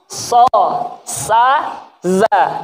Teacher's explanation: As-safir itu seperti menyerupai burung atau angsa atau ular, mendesis.